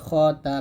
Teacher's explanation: তারপরে খ জবর খ তা জবর তা খ তা, এখানে খাতা বলবেন না, আমরা এখানে খর উচ্চারণটা খার মতো করে ফেলি, এটা করা যাবে না